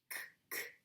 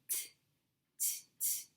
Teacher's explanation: The final sound k, k doesn't make a vibration on your throat.